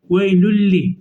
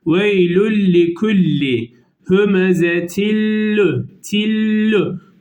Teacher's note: Gunnesiz, yani ses genze, buruna gitmeyecek şekilde. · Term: İdgamı bila gunne